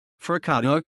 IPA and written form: fuɾˈkadðu (forcado)